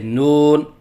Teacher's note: لہراؤ کے ساتھ پڑھنا، جیسے نون، یہ غلط ہے۔ نون کے درمیان واو کو مجہول پڑھنا